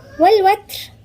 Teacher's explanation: التاء هنا همس يعني جريان نفس